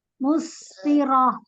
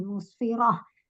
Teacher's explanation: Jadi sin dengan sukun ya, dialirkan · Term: sinnya rohwah